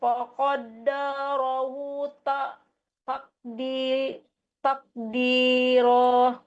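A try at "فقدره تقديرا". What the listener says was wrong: Qaddara itu nggak ada mat. Di ki itu tidak ada mat juga.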